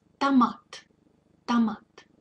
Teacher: So the thing is, when О isn't stressed, it gets reduced and it reminds a little bit of А. So it becomes kind of a short А.